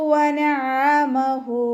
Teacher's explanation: ഫഅക്റമഹു വനഅമഹു, വാവ് ഉച്ചരിക്കുമ്പോൾ ചുണ്ടുകൾ ഒന്ന് സർക്കിൾ ചെയ്ത് കൊടുക്കുക. അയിന് തൊണ്ടയുടെ മധ്യഭാഗം വസത്തുൽ ഹൽക്കിൽ നിന്നാണ് വരുന്നത്. സൗണ്ടിന് ഹംസയായി പോവാതെ ശ്രദ്ധിക്കുക.